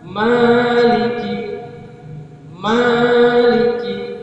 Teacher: huruf mim berjumpa dengan Alif Ma panjang dua harkat · Kalimat maliki di mana huruf mim berjumpa dengan alif, ma panjang 2 harakat. Huruf yang dibaca dengan ma dengan panjang itu adalah huruf yang makhrajnya itu keluar daripada rongga mulut panjang. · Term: Alif Mad, alif al-maddiyah